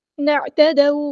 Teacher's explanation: واو لین آ گئی نرمی سے موڑیں گے